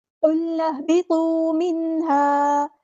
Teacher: قاف کو ہم نے پورا ادا کرنا ہے، لام کو ہلانا نہیں ہے۔ قل اہبطوا نہیں پڑھنا، قل اہبطوا، نون کو ہم نے ہا کے ساتھ ملا دینا ہے، ہمزۃ الوصل ہمارا ڈراپ ہو جائے گا۔